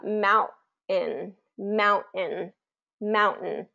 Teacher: and then a vowel or two and then an n then the vowel gets dropped and the T won't be released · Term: glottal stop